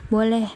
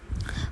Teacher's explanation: Nada datar pernyataan boleh. Nada naik pertanyaan.